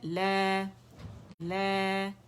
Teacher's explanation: جب ہم اگر بولیں نا لا، لا، یہ جو بلندی ہے نا آواز کی، لا، یہ الجوف سے جو ادا ہو رہا ہے الف مدہ